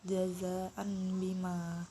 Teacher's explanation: Oleh sebab itu, ketika nun mati ataupun tanwin bila bertemu dengan huruf ba, maka bibir atas dan juga bibir bawah keduanya menempel lalu diiringi dengan dengungan kurang lebih sekitar 2 harokat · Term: iqlab